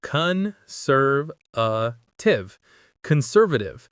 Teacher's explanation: The stress is on sir.